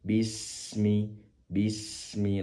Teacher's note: Pastikan sin-nya disempurnakan sifat hames. Mengalirkan nafas.